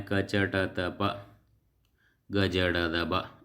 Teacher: ಅಲ್ಪ ಅಂದರೆ ಕಡಿಮೆ, ಪ್ರಾಣ ಅಂದರೆ ಉಸಿರು. ಅಲ್ಪ ಪ್ರಾಣ ಅಂದರೆ ಕಡಿಮೆ ಉಸಿರಿನಿಂದ ಉಚ್ಚರಿಸಲ್ಪಡುವ ಅಕ್ಷರಗಳು ಅಲ್ಪ ಪ್ರಾಣ ಅಂತ ಕರಿತೀವಿ.